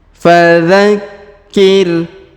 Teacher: Huruf K atau Ki di sini berharokat tasdid, maka kita tahan dan tekan.